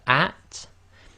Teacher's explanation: So with the sukoon we have at, and when you say at, you'll notice you have to let a bit of air through the teeth, but it's not an echo